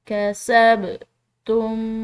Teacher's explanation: با حروف قلقلہ میں سے ہے تو اس پر ہم نے قلقلہ کرنا ہے، آواز کو ہلا کر ادا کرنا ہے